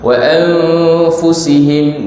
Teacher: nun mati bertemu fa, ikhfa